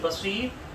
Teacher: بصیر کی صاد کو موٹا اور آخر میں بصیرن سے را کو ساکن کر دیں گے